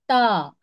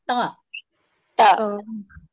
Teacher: जबान की नोक और और ऊपर के सामने के दो दांतों की जड़ से अदा होता है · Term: ता का मखरज